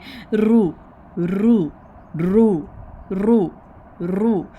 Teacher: अब जब रा के साथ अलिफ का, तब हमने खींच कर पढ़ना है। आप देखिए रा के ऊपर पेश है, जमा है, तो हमने इसको हैवी साउंड में पढ़ना है।